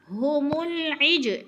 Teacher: فی قلوبہم العجل، فی پہ یہ مدہ، قلوب پہ وہ مدہ، اور قاف موٹے حروف میں سے ہے، پر کر کے پڑھنا ہے۔ ہم العج، عج پہ قلقلہ ہو رہا ہے، جیم کو ہلا کر پڑھنا ہے